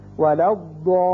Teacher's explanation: اسی طرح یہاں دیکھیے ضاد زبر الف مدہ ہے، آگے لام مشدد ہے، یہاں شد کی وجہ سے پہلے الف معروف ہے تو یہاں مد ہوگا 6 حرکات کے برابر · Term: مد لازم